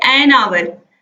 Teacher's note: आवर H से प्रारंभ हो रहा है लेकिन यहाँ पर आ निकल रहा है